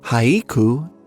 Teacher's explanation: the word haiku has 2 syllables in English, but 3 mora, haiku, in Japanese